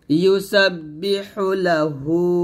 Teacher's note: হাটা হলকের মাঝখান দিয়ে চাপ দিয়ে চিকন করে বলবেন